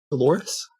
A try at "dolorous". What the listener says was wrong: It's not Dolores. It's Dolores. You're putting emphasis on the wrong syllable, which is why I keep saying that I'm the one that should be reading the audiobook.